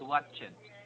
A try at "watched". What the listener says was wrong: Try to remove e as much as possible.